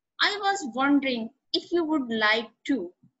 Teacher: is nervous and doesn't want to appear too direct or bold. Notice how the question goes up at the end, which shows that he is not overly confident.